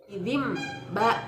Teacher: bacaan nun mati atau tanwin tidak lagi dibaca sebagai Nun atau tanwin berubah menjadi huruf mim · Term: iqlab